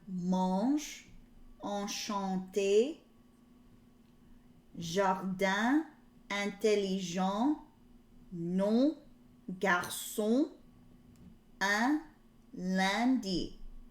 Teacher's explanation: And here it tells you how some French sounds are nasal, so your air is going to come through your nose. With these, the N after the vowel isn't pronounced. So the N is oddly silent.